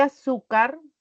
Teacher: en el caso de azúcar al pronunciar recae en la penúltima sílaba en su Esta es su sílaba tónica y las demás son